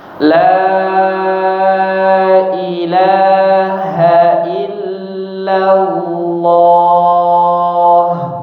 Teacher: La yang pertama lailaha dipanjangkan empat atau lima harakat ya. Empat atau lima harakat ya.